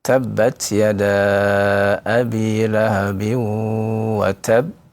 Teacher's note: Yang pertama sukunkan terlebih dahulu ya. Kemudian ya waqaf dengan memberhentikannya. Lalu yang ketiga adalah memantulkannya karena dia huruf qalqalah ya. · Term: qalqalah akbar